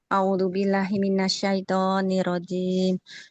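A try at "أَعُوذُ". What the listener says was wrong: A'udzu. Hamzah dengan ainnya nggak boleh au ya. A'udzu billah.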